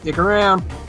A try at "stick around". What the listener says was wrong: You said stick around, but the S did not come into the sound. So all it sounded was stick around.